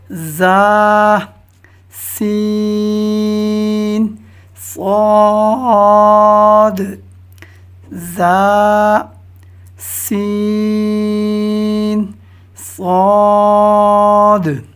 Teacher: ان میں 3 حروف ہیں جو کہ زبان کی نوک اور دونوں دانتوں کے اندرونی کنارے سے ادا ہوتے ہیں۔ وہ حروف ہیں زا، سین، صاد۔ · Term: حروف صفیریہ